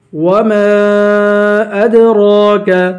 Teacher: وما ادراک ما القارعہ، وما کو میم کے بعد الف ہے، الف پہ مدہ ہے، حروف مدہ میں سے اس کو 3 الف کی مقدار کھینچ کے پڑھیں گے · دال پہ قلقلہ کریں گے ، را کو ایک الف کے برابر کھینچ کے